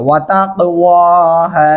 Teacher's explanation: यहाँ पे क़ाफ़ साकिन हो रहा है, तो इसलिए इसके ऊपर कलकला किया जाएगा